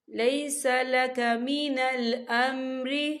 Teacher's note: خَائِبِينَ لیس لک من الامر، یا دیکھیے لیسا، یہاں پہ یا ساکن ہے، یا ساکن سے پہلے زبر ہے، تو یہاں پر یا لین ہو رہا ہے، تو ہم اسے بالکل نہیں کھینچیں گے، ہم اسے جلدی سے پڑھیں گے۔